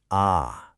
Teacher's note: It's always a short, open ah sound. Just think of the A in the word father.